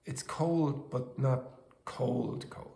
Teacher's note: the first word is spoken with contrastive stress. We emphasize it with our voice